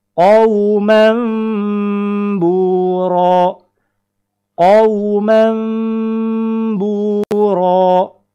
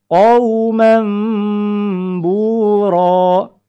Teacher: Yaitu dibuang barisnya 1, kemudian diganti posisinya oleh mim. Adapun prakteknya, setelah kita ganti dengan bunyi mim, jangan lupa ditahan lamma, lamma ditahan, jangan lupa ditahan lama. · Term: hukum iqlab